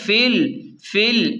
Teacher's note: الف اور لام گر جائیں گے، فا کو ڈائریکٹ لام سے ملائیں گے